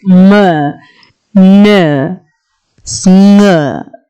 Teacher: So there is complete oral closure when a nasal sound is being produced. The palate is lowered and air passes through the nose.